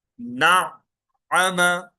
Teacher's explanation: کذب، زال زبان کی نوک باہر، کذب، نیکسٹ ورڈ، نعم، یہاں پر عین پہ تشدید ہے اس لیے عین کو دو بار پڑھ رہے ہیں